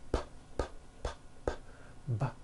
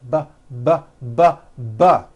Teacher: They are produced exactly the same way here in your mouth, but the P sound has no voicing and the B sound, b, b, does have voicing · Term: paired consonants